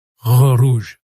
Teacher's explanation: le R français ne se fait pas avec la langue, mais avec le fond de la gorge. Si votre langue est trop en avant dans la bouche, le son ne sortira pas bien.